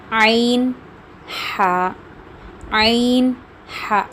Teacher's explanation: عین اور ہا کو آپ لوگوں کو کوشش کر کے نکالنا پڑے گا کیونکہ وہ بیچ حلق سے نکلتا ہے